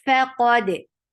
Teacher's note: Qad, qaf is heavy. Dal will get qalqala.